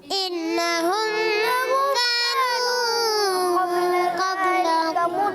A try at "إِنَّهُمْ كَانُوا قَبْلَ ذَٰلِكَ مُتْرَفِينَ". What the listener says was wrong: اچھا میں غلطی کیا ہوئی کہ آپ نے انہم کا نون مشددہ غنہ جلدی ختم کر دیا, تو آپ ڈسٹرب ہو گئے ہو.